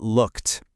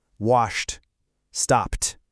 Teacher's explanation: If the verb ends in a voiceless sound like a p, k, or s, then the ed ending is also voiceless. It makes a really sharp, crisp t- sound. It's like your vocal cords just take a little break for that last sound.